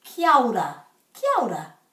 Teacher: they're putting the A and the O together to make ao